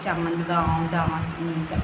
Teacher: अनुनासिक चंद्रबिंदु को अनुनासिक कहा जाता है और इसका उच्चारण नाक और मुँह की सहायता से किया जाता है